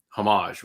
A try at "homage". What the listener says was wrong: The H is silent. It's not a homage; it's an homage.